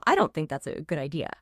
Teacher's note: Strong stress on don't and the core concept good idea.